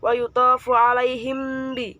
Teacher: disebut dengan bacaan ikhfa syafawi sebab mim sukun bertemu dengan ba